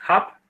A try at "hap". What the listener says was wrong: Before you continue, it's very important to pronounce the P at the end because it sounds like you are saying I eat hap.